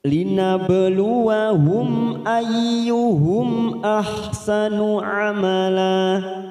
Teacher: Linabluwahum, hum ini kita baca jelas tanpa mendengung. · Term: idhar safawi